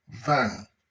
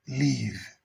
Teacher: this is a voiced sound, and you can hear it at the beginning of the word van and at the end of the word leave